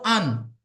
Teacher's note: যদি দুটো জবর পড়া হয় হামজা দু জবর আন অর্থাৎ আওয়াজটা নাকের মধ্যে যাচ্ছে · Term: দুই জবর